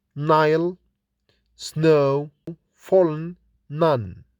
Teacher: In the nasal sound n, the volume is lowered so that the air can escape through the nasal cavity. N is articulated with the tongue tip pressing the alveolar ridge. N is voiced like in Nile, snow, fallen, none. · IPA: /n/